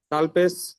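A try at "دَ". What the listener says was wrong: দাল পেশ না, দালের উপর জবর আছে। হ্যাঁ, আলিম মাদ্দা আছে। আলিম মাদ্দা আছে। দাল আলিফ জবর দা। দাল আলিফ জবর দা।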